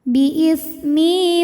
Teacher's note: sebab ada ya sukun yang sebelumnya berbaris kasrah maka huruf mim dipanjangkan dua harakat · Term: mad thobii zhiri